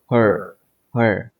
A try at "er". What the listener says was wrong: Get the H out. Use your voice box. Don't use your tongue. Er.